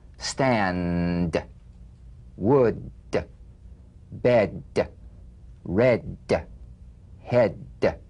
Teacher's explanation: play this d drumbeat on the springing away of the tongue from the upper gum Ridge feel a pulsation in the tongue tap the drum beat d